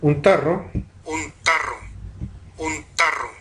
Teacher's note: Voy a mostrar ahora la oclusiva postdental áfona.